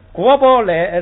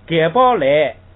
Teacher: 语法词是虚词，就要读轻声，就不能当成业来读这个雷